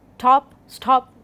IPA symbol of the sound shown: tʰ